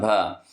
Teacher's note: भ का उच्चारण स्थान क्या है? तो ओष्ठ है।